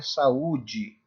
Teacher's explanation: É a separação de vogais. É quando as vogais elas ficam em sílabas diferentes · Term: iato, hiato